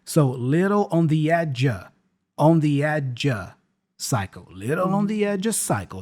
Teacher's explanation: the preposition of there, again, gets reduced to a schwa sound